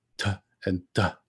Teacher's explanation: My tongue sort of comes right up against the back of my front teeth, and I make that t and d sound. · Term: dental